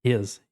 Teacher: his parece que tem um Z no final